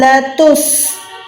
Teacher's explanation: سین کو وسل ساؤنڈ دے رہی ہوں